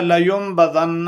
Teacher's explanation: نبذ یہ اس کا مادہ ہے، لیکن نون ساکن کے بعد جب با آ جائے تو اس میں اقلاب کر دیتے ہیں، اس کو میم سے تبدیل کر دیتے ہیں، اس لیے لینبذن اس کو پڑھا گیا ہے۔